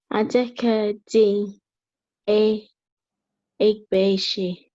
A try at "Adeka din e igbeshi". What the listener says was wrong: Okay, now that word, the funny three, is not a, it is e, as if you're saying air, the air that we breathe, air, but you cut it short, e.